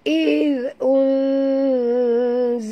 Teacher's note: huruf zal lembut sebutannya, sentil ke lidah · Nun mati bertemu zai. Kita kena sorokkan bunyi nun ke dalam huruf zai disertai dengung. Dua harakat ikhfa hakiki.